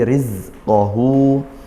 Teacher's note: Riz hati-hati Za didesiskan tidak seperti sinnya